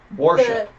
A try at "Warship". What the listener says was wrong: You sound like it's an O.